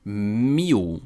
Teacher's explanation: em português, se você colocar um L no final da palavra, vira o som de U.